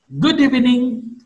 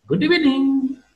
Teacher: Good evening is to be marked with rising falling tone.